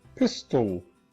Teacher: this schwa is not the nucleus. This schwa is just telling us that this L is the nucleus. It is syllabic.